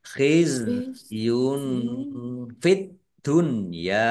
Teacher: Tumah tanwin bertemu dengan huruf fa, bacaan ikhfa dibaca samar-samar. Ad-dunya alif lam samsiyah karena tidak dibaca.